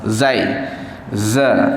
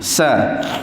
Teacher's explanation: Huruf zai dia tak ada angin lah. Kalau sin dia ada angin, dia akan keluar hembus, itu hamas. Tapi huruf zai dia tidak ada sifat tidak ada sifat hamas, dia jahar.